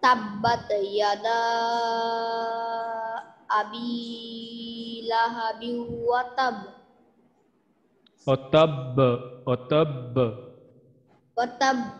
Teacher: এখানে বায়ের কলকলাটা আমাদের সর্বোচ্চ স্তরের কলকলা। আমরা জানি তিনটা, যেহেতু আমাদের তাজদিদ আছে বায়ে, আর এখানে আমরা বায়ে ওয়াকফ করতেছি, সেই এই কারণে আমাদের বায়ে আমাদের কলকলাটা বেশি হবে।